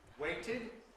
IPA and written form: ˈweɪtɪd (waited)